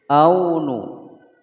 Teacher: au ada wawu sukun sebelumnya fathah, hukum bacaan layyin, tidak dibaca panjang